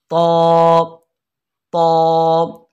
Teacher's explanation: जबान की नोक को ऊपर वाले दांतों की जड़ पे लगाएंगे तो अदा होगा, लेकिन इसको हम मोटा करके पढ़ेंगे, बारीक नहीं पढ़ेंगे।